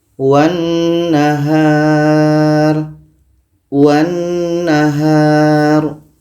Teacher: Sebelumnya adalah huruf wa. Maka lam ini tidak kita baca karena wa ini terus melompat ke na, terus masuk ke na.